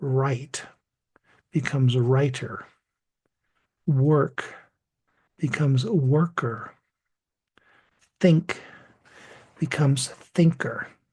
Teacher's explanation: now notice something about those last two words Creator and dictator the o r and the e r sounds are pronounced the same